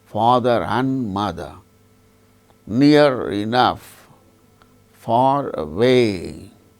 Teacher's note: the word ending R is pronounced when it is followed by a word which begins with a vowel sound